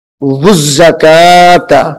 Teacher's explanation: واو کو زا کے ساتھ ملا کر سختی سے پڑھیں گے.